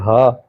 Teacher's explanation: ये हा एक आंख वाली भी लिखी जाती है और दो आंख वाली भी लिखी जाती है। तो इस हा की आवाज़ हलक के आखिर से अदा होती है